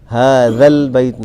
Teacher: هذا البيت نرمی سے نکلتا ہے اور دونوں دانتوں کے درمیان میں زبان آنے کے بعد یہ حرف ادا ہوتا ہے